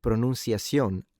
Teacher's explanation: in Latin American Spanish, the C is read like a S that doesn't vibrate